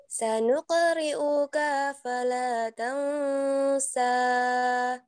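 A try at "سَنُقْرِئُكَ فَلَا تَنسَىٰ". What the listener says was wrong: Coba kanya tidak boleh panjang. Sanuqri'uka fala tansa. Sanuqri'uka fala tansa.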